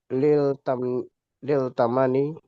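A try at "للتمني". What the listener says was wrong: Nah, dia alif lam syams ya, tamanni.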